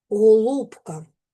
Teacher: Ненаголошене звук о перед складом з наголошеним у вимовляємо з наближенням до у.